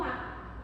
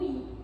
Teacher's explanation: As vogais podem ser abertas quando a boca está mais aberta, como no A, ou fechadas quando a boca está mais fechada, como no I.